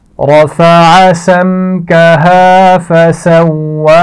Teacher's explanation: میم ساکن کے بعد میم بھی نہیں ہے حرف با بھی نہیں ہے تو یہاں پر غنہ نہیں کیا جائے گا